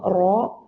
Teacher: റ എന്ന അക്ഷരം നമ്മൾ അറബിയിൽ ഉയർത്തി ഉച്ചരിക്കുമ്പോൾ റോ എന്നായി മാറുകയാണ് അല്ലാതെ മനപ്പൂർവ്വം ചുണ്ട് കൂർപ്പിച്ചിട്ടല്ല റോ പറയേണ്ടത് ഒകാരത്തിൽ ഒരു അക്ഷരം അറബിയിൽ ഇല്ല